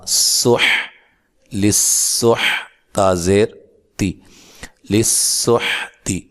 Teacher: یہاں سے ہم پڑھتے ہیں لام زیر سین لس. سین کو باریک سیٹی سے ادا کرنا, سیٹی کی آواز آنی چاہیے